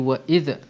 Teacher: pastikan tidak ada qalqalah di situ sebab zal bukan huruf syiddah, jadi dia tak boleh pergi pada sifat qalqalah.